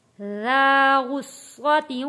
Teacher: ذال بہت نرمی کے ساتھ پڑھے جانے والا لفظ ہے۔ زا میں اور ذال میں آپ نے فرق رکھنا ہے، سختی کے ساتھ ذال کو نہیں پڑھنا۔